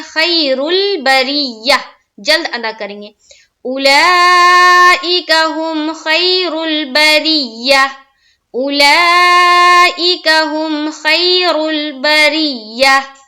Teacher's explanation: یا لین کو ہم پڑھتے ہیں نرم آواز کے ساتھ، جلد پڑھتے ہیں، ٹھہراؤ نہیں کرنا ہے، کھینچنا نہیں ہے